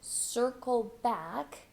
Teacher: hold that k at the End